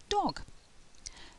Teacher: the lips are starting to get more rounded and the tongue is at the back of the mouth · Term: short sound